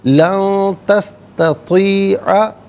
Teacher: نون ساکن کو اخفا کے ساتھ پڑھا جائے گا۔ اخفا کہتے ہیں ناک میں آواز لے جا کر گنگنانا۔